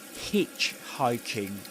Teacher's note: in hitchhiking you stress the syllable hitch